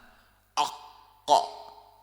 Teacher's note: حرف القاف من اقصى اللسان